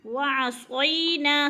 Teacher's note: قالوا سمعنا وعصینا، سمعنا پہ بھی الف مدہ، وعصینا صوی پہ یا لین ہے، یا ساکن سے پہلے صاد کے اوپر زبر ہے تو یا لین کھینچنا بھی نہیں ہے، جھٹکا بھی نہیں دینا